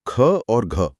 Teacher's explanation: इनको बोलते वक्त मुंह से हवा ज्यादा फोर्स से बाहर आती है। इसलिए महाप्राण मतलब ज्यादा श्वास।